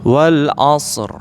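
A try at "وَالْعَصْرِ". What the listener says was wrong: Oke, coba Ustaz ainnya tekan lagi. Wal 'asr.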